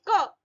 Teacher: कोमल तालव्य means कंठ से आवाज आ रही है।